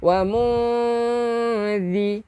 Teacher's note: Hujung lidah keluarkan sikit untuk zal.